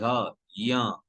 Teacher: य जैसे ही आप बोल रहे हैं तो जिह्वा का मध्य भाग ऊपर की ओर उठ रहा है। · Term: तालव्य